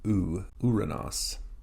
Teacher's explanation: has a smooth breathing so it doesn't start with who it starts with U